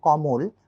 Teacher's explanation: তো যে কারণে আসলে আমাদের উচ্চারণ সূত্র যেহেতু বলছে এখানে যে অ কখন ওকারের মতো উচ্চারিত হচ্ছে, তো সেই ক্ষেত্রে আমাদের অ এর আগে যদি অ, আ, এ অথবা ওকার থাকে তবেই সেটি অ এর পরিবর্তে ওকারন্ত উচ্চারিত হবে। যেমন কমল, মাঝের মটা আমরা ও হিসেবে বলছি। কমল লেখা আছে কিন্তু আমরা সেটা বলছি কমল।